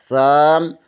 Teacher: زبان کی نوک ثنائے علیہ کے سرے سے لگے تو ثا ادا ہوتا ہے